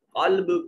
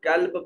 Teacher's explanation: قاف موٹا تھا، آپ نے اس قاف کو کاف کر کے پڑھ دیا